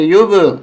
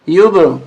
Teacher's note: آواز ڈبل آئے گی با کی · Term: قلقلہ